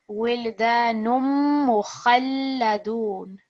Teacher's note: So under the two letters that you see, we have a shadda on the mim and the lam. We're going to put extra stress on there.